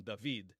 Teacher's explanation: with the modern Israeli pronunciation, we don't pronounce the dh sound anymore